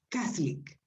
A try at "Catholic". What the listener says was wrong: No, olvídate de la O que está ahí, Catholic.